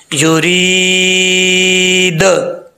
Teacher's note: last पे दाल जो है जब वक्फ करेंगे तो साकिन हो जाएगा, तो इसमें जब हरूफ कलकला साकिन हो उनमें कलकला होता है, तो ये दाल साकिन हो जाएगा और यहां पर कलकला करेंगे